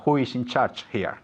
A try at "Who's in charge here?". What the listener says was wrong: And contract.